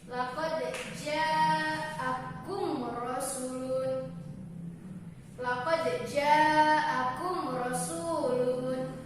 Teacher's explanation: Cara membaca izhar syafawi yaitu jelas dan terang tanpa berdengung di bibir dengan mulut tertutup